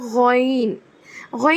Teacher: حلق کے first part سے ادا ہوگا، ادنا حلق سے، ہے نا، تو لیکن اس کو خوا کو بھی موٹا کرنا تھا، غین کو بھی موٹا ہی کرنا ہے، غین۔